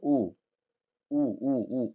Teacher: जब आप ऊ बोलते हैं तो ये ओठ गोल हो जाता है। ऊ बोलिए, ऊ ऊ ऊ ऊ ओठ गोल हो जाता है, ओठ गोल हो जाता है।